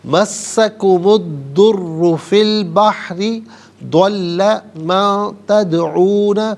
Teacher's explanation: را پر پیش ہے، را کو پر کر کے پڑھیں گے، اور مشدد ہے تو جماؤں کے ساتھ پڑھیں گے۔